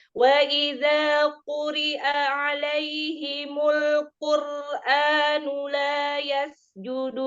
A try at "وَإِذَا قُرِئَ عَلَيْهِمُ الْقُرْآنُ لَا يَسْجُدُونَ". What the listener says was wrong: Nah, kof pertama masih tipis ya.